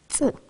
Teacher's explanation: Dil ucu diş etlerine dayanarak çıkarılır. T bir patlak ünsüzüdür ve dilin ön kısmı diş yuvarlarına bastırarak telaffuz edilir.